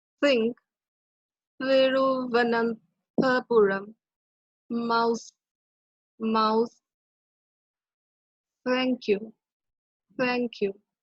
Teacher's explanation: tip of the tongue against the teeth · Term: dental fricatives